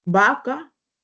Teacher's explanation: nosotros no hacemos diferencia cuando hablamos entre la v y la b eh nosotros decimos vaca como si dijéramos bebé por ejemplo entonces